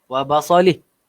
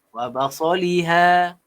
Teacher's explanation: Dekat belakang ha ni ada huruf alif lagi. Jadi panjang.